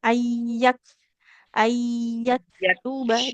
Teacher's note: kaf sukunnya jangan ada e-nya ya, tidak ayyaketuba, tidak ayyake ya, tapi nafasnya yang kita alirkan